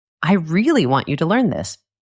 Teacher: I am emphasizing the word really. I am adding importance to it. I am showing my strong feeling.